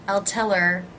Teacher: I reduced the word her by leaving out the H